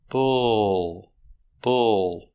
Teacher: The sound bull. The L is a dark L after the sound. So the sound is in the back. Not but ul.